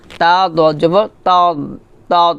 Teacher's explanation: হবে না মানে যখন আপনি তা দজব তাদ বলবেন তখন আপনার জিহ্বার আগা সামনের দাঁতের গোড়ার সঙ্গে লাগাবেন না জিহ্বার গোড়াটা উপরের মারি দাঁতের গোড়ার সঙ্গে লাগিয়ে বলবেন তা দজব তাদ মোটা করে বলবেন তা দ এটা আবার হবে